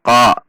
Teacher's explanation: tidak dengan membulatkan bibir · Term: huruf qaf